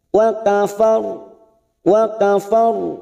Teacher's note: Tawalla wa kafar. Kita wakaf ada huruf ro lagi di sini, tapi sebelumnya ada fathah. Kita baca tafkim tebal.